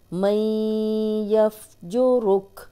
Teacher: मैं, नाक में आवाज़ लेके जानी है, गुन्ना नाक में थोड़ी देर आवाज़ के ठहराने को कहते हैं।